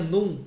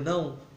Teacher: no advérbio de negação o ditongo nasal se reduziu à vogal nasal